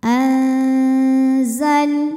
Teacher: lam sukun dibunyikan dengan jelas, namanya lam mutlak ya